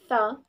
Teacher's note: This word has two consonants. First, voiceless dental fricative sound th